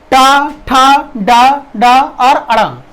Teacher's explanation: तालु के ठीक ऊपर वाले हिस्से पर होता है मूर्धा, और वहां पर जीभ जो है वो लगती है, पलट कर लगती है,